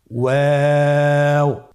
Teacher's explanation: 2 ঠোঁট গোল করে মাঝখানে ফাঁক রেখে হরফটি উচ্চারণ করতে হবে। · ওয়াও হরফটি উচ্চারণের ক্ষেত্রে বারিক হবে এবং 3 আলিফ টেনে পড়তে হবে।